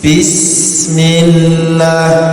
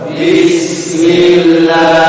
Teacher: sin sin itu bukan di tengah lidah, tapi di ujung lidah. Jadi tipis. Bismillah. Jadi teorinya ini ujung lidah diletakkan di ujung gigi yang bawah.